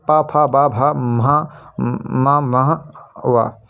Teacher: होष्ठ दोनों होठों से उच्चारित